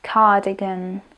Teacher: Prízvuk je na prvej slabike. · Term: slovný prízvuk